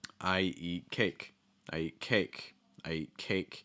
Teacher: eat cake in that sentence cake is your stress a cake cake has a higher pitch and it also has a vowel sound that's just held a little bit longer